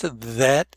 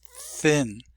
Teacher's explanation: There are two THs. The voiced, that, and unvoiced, thin.